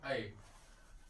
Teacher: आ plus ए मिलकर ऐ हो जाता है जिनका उच्चारण स्थान कंठ ताल से होता है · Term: संयुक्त स्वर